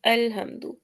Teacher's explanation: لام کیونکہ حروف کلکلہ میں سے نہیں ہے تو اس کو ہم ہلائیں گے نہیں